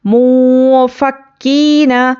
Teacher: نون ساکن کے بعد حرف اخفا آیا ہے تو ہم یہاں پر کیا کریں گے، نون کی آواز کو ناک میں چھپا کر پڑھیں گے، اور اخفا کی مقدار یہ الف کے برابر ہے۔